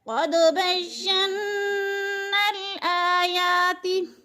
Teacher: क़द बय्यन्नल आयाति, बय्यन्ना पे नून के ऊपर शद्द है, क्योंकि नून मुशद्दद है, इसलिए नून पर गुन्ना करेंगे और सख्ती से यानी जमा कर पढ़ेंगे। आयाति, आ और जा खड़ी ज़बर है, खड़ी ज़बर भी अलिफ मद्दा का कायम मकाम है, यानी एक अलिफ के बराबर खींच कर पढ़ना है।